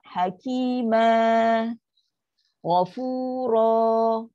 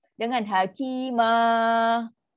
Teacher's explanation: Dia adalah mat iwad kena 2 harakat sahaja.